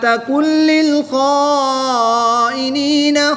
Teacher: نون ساکن کے بعد لام حروف یرمالون میں سے ہے تو یہاں پر ادغام بلا غنہ ہوگا یعنی کہ بغیر غنہ کے ادغام کر کے پڑھیں گے